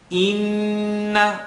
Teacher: let the sound vibrate in the nasal cavity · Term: Noon shadda